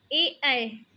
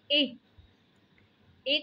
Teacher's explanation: ए का उच्चारण कंठ से भी हो रहा है, लेकिन कुछ कुछ हिस्सा ताल में भी छू रहा है